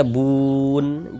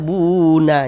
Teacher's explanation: Kalau kita berwaqf di huruf nun kita baca bun. Jangan baca buna, jangan. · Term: huruf nunnya disukunkan